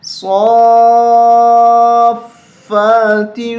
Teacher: 5 الف تک کھینچنا ہے، بڑی مد ہے